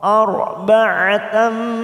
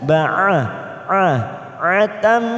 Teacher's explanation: Fakhudh ra sukun didahului fathah, maka kita baca tebal tafkim. arba'atam ain jangan samakan dengan hamzah ba'a atam. Ada tak marbutah di sini fathah tanwin bertemu mim, namanya idgham bi gunnah.